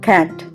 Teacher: అ అనే ధ్వని vocal ట్రాక్ యొక్క ముందు భాగంలో వ్యక్తీకరించబడుతుంది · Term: షార్ట్ వోవెల్స్